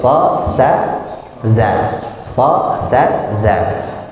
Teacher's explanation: Dia makhrajnya ada di antara dua seri bagian atas dan bawah, lebih dekat ke bawah. Itu huruf safir, sa, sa, za.